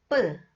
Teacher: It makes b sound. Okay, press the lips together with force for some time and then open them to make a sound. Okay, press it with more force than beep sound.